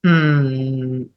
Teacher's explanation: In British English, when the letter or when the sound R occurs before M, before M, they skip it.